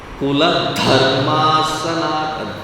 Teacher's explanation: Kuladharmasanatana, dha has to be mahaprana and it has to be given that emphasis.